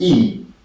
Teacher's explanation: E is pronounced above half close. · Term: short E